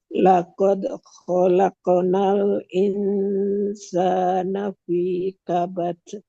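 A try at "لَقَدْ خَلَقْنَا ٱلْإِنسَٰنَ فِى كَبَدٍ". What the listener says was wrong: Bagus, tapi pantulan dalnya jangan jeda nih, jalan aja.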